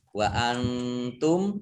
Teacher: nun sukun bertemu dengan huruf ta, bacaan ikhfa dibaca samar-samar